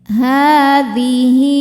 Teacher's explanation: Ha hukumnya mad tabi'i muqaddar karena ha berharokat fathah panjang. Cara bacanya panjang 2 harokat. Hadhihi. Hi hukumnya mad silah qasirah karena ada hal dhamir diapit 2 huruf hidup dan setelahnya bukan hamzah.